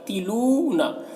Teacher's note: لو میں واو مدہ ہے، اسے بھی ایک الف کے برابر کھینچیں گے